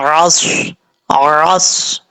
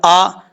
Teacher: عین کا جو مخرج ہے یہ حلق کا درمیان حصہ ہے، وہاں سے یہ عین ادا ہوتا ہے۔